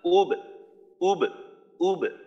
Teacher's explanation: উ বলার সময় ঠোঁট গোল, কলকলা করার সময় ঠোঁট খোলা